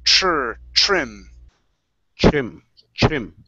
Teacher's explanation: With our TR, make sure to use a CHR sound instead of trim.